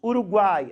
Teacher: Você tem uma vogal no meio e 2 semivogais. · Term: tritongo